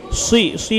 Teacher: সি বলার সময় মুখটা একটু গোল করব মোটা করে সি